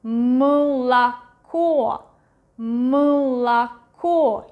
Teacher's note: But this one is one more syllable like before the stressed one, so it's not really pronounced as A, but something in between U and E